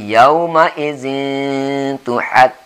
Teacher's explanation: Kemudian tanwin atau 2 barisnya. Artinya ada bunyi N di situ, kemudian bertemu dengan ta, itu ikhfa. Hingga membacanya yauma izin sama-samar, jangan N betul, bukan yauma izin, tapi yauma izin tuhad.